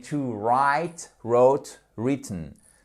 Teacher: Faites attention à ne pas prononcer le W, ok? Ce n'est pas to write, mais to write, wrote, written.